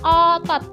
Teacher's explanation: O yang kedua ini posisinya itu madia bawah belakang dengan posisi mulut semi terbuka.